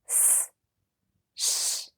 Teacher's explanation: the tongue moves a little bit further back not much but a little bit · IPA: /ʃ/